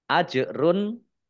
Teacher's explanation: Jim sukun bacaan qolqalah memantul ditampakkan pantulannya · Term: kolkolah